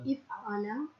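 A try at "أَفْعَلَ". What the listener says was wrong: Not if. Af'ala. Af, yeah.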